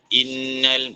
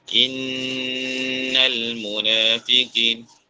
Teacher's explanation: nun sabdu, mim sabdu ni sampai 3 harakat dengung dia. Wajib guna, paling kuat.